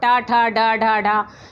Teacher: यानी कि हमारी जीभ जो है वो पीछे पलट जाती है और उसके द्वारा वो ध्वनियाँ निकलती हैं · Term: मूर्धा ध्वनियाँ